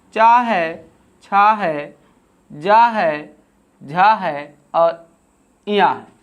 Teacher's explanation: जो चा वर्ग होता है उसका उच्चारण स्थान ताल होता है। इसे ही हम तालव्य व्यंजन के नाम से जानते हैं।